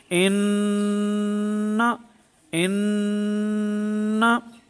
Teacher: تو ناک کے بانسے میں بھی آواز گئی ہے ایک الف مقدار، لیکن نون کو اس کے مخرج سے ظاہر کیا گیا ہے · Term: غنہ زمانی مظہرہ